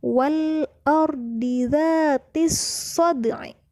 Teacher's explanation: Kemudian terdapat huruf dal. Huruf dal adalah salah satu huruf qalqalah, maka kita membacanya dengan dipantulkan